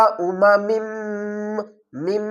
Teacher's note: میم، ہونٹوں کو آپس میں ملا لیں گے اور آواز کو ناک سے نکالیں گے۔ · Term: غنہ